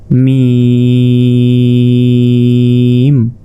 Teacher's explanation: ঠোঁটের ভেজা অংশ থেকে মিম উচ্চারিত হয়, মিম। মিমটা 4 আলিফ, মিম।